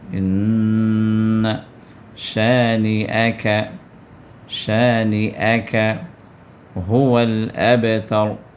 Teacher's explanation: ان کے اندر نون کو شدہ آ گیا تو غنہ کرنا ہے